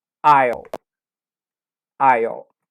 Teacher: Nesse caso aqui, esse S eu não falo, e eu vou falar somente aisle.